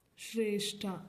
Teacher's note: ಒತ್ತನ್ನ ನಾವು ಉಸಿರು ಬಿಟ್ಟು ಉಚ್ಚಾರಣೆ ಮಾಡಿದೀವಿ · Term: ಮಹಾಪ್ರಾಣ